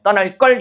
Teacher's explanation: 받침에 리을이 들어가는 어미들의 뒤에 이런 기역 같은 예사소리는요. 실제 발음을 된소리로 하거든요.